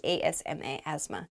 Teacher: talking about how I have asthma asthma is spelled very weirdly there's a th in there but we do not say the th · There's a TH in there, but we do not say the TH. It sounds like ASMA, asthma.